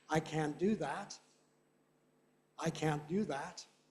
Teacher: And in North American English, can't, very often you can hardly hear the T, if at all.